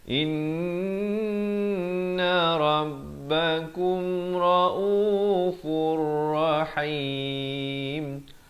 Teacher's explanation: Raufur masuk tanpa dengung. Dia daripada raufun asalnya. Bila datang ra, ada dua huruf idgham bila gunnah.